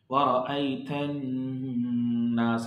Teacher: And of course, noon carries shad. When noon becomes shaddiya, we will have to long it for the 2 harka. · So alif noon both would be, alif is called here hamza wasli. Hamza wasli means would be dropped, no voice. And same with the lam. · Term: ghunna